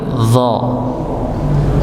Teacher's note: Kalau huruf dha ujung lidah bertemu dengan gigi bagian atas, tetapi ditambah dengan mengangkat pangkal lidahnya.